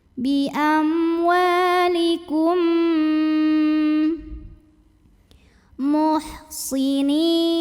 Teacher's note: mim pertama masuk ke mim kedua disertai dengung, bunyi M tahan. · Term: idgham mimi